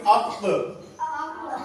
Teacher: جڑ زبان تالو سے مل کر کیا ہوتا ہے؟ قاف ادا ہوتا ہے